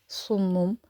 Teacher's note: صاد bold حروف مستعلیہ میں سے ہے، ان کو ہمیشہ بولڈ پڑھا جاتا ہے